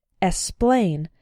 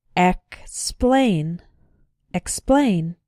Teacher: be careful in words like explain to include the k sound sometimes students pronounce it like esplain but that's not correct it